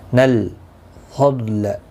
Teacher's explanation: ان، نون مشدد پر غنہ ہوگا۔ نل فضل، ضاد مستعلیہ ہے، پر پڑا جائے گا، اس کو ہلانا نہیں